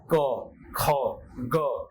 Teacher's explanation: कंठ से हमारे निकल रहा है, गले से निकल रहा है।